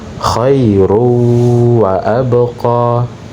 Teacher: Tanwin dimasukkan ke huruf waw, ya, kemudian disertai dengan dengung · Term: idgham bi gunnah